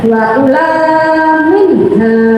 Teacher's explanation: Di situ ada nun sukun bertemu dengan ha. Maka akan dibaca Idhar Khalqinya yaitu jelas di tenggorokan. Jadi nun mati akan dibaca dengan jelas.